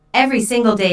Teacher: emphasized every single day notice that each word here is stressed the speaker wants to make a point so she emphasizes each word equally · content words here so they are all emphasized every single day notice that each word here is stressed the speaker wants to make a point so she emphasizes each